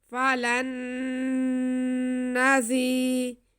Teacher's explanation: نون پہ غنہ ہوگا ایک الف کے برابر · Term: ادغام بالغنہ